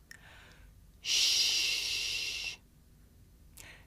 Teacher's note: This is a voiceless consonant. It's pronounced sh. This is the sound you make if you want someone to be quiet.